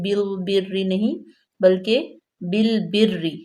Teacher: با زیر لام بل، لام ساکن ہے، اس کو ہم موٹا نہیں پڑھیں گے